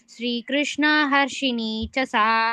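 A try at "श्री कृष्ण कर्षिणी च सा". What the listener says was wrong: हर्षिणी कर्षिणी. हर्षि இல்ல, हर्षिणी இல்ல. கர்ஷினி கர்ஷினி. எனக்கு ஹர்ஷினின்னு கேட்டது, அதனால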